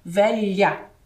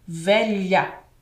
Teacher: a nossa língua encosta inteirinha no céu da boca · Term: som do LH